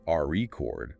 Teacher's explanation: If you stress the first syllable RE chord, it's a noun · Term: Word stress